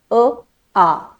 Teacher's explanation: इथून येतो बघा पूर्ण घशातून पूर्ण गळ्यातून अ आ ठीक आहे तिथे मला जिभेची गरज लागत नाही तिथे मला दातांची गरज लागत नाही मला जीभ टाळूला लावायची गरज नाहीये माझा उच्चार थेट कंठातून आला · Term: कंठ्य वर्ण